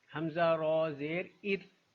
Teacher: رو ساکن سے پہلے والے حرف پہ اگر زیر ہوگا تو رو کو باریک پڑھا جائے گا۔